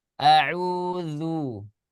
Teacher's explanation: Ketika kita mengucapkan a'udzu, itu menggunakan huruf zal. Maka jangan sampai salah. Jangan sampai ke huruf dal. Karena huruf dal ya itu makhrajnya beda lagi.